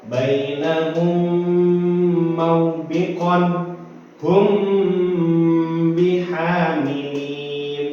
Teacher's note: mim sukun berhadapan dengan huruf mim atau ba harus dibaca mendengung